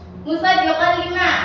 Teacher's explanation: karena fathatain bertemu dengan huruf lam. Jadi disebut sebagai idgham bila gunnah.